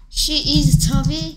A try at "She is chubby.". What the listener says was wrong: She is... 왜 묻는 느낌이 드냐? 계속 묻는 느낌이 드네. She is chubby. She is chubby. Is she chubby? Is she chubby? She is chubby.